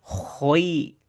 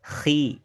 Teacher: ketebalannya itu dia akan hilang ketika berharokat kasroh. Makanya tidak dibaca khoi, tapi dibaca khi.